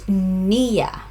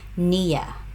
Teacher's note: It's on the first syllable, niya.